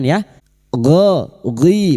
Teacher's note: huruf gin bukan qalqala jangan sampai dipantulkan ya gho ghi bukan qalqalah huruf gin memiliki sifat jahr dan rakah tertahannya nafas dan mengalirnya suara tetapi jangan dipantulkan.